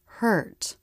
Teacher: Before coming forward for the T. In a stressed syllable, the vowel curves up, then down.